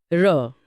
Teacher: लुंठित या प्रकंपी व्यंजन र। हाँ, र बोलते समय जीभ तालू पर कांपती है या लुढ़कती है, इसीलिए इसे लुंठित कहते हैं।